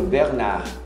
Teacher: Não é Bernarda. Não pronuncia o D nesse caso.